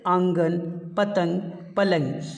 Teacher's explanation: نون غنہ اس کی آواز ناک سے نکلتی ہے